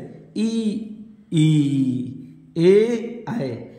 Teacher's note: ऐसे स्वर होते हैं जिनके उच्चारण में जीभ का अग्र अगला भाग सक्रिय होता है, जैसे ई, ई, ए, ऐ, ये अग्र स्वर कहलाते हैं।